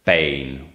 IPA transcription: peɪn